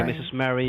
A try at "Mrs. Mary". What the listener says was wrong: Not Mistress Mary. Mrs. Mary. Mrs. Not mistress. I'm not a mistress. I'm a Mrs.